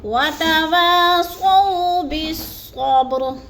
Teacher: با پر قلقلہ ہے اور با ساکن ہے، حروف قلقلہ میں سے ہے، تو اس کو تھوڑا سا ہم نے ہلا کر پڑھنا ہے۔